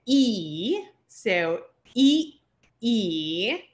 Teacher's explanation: These next two signs, again, there's a short sound and a long sound, and these are what is known as palatal, and you say them with a smile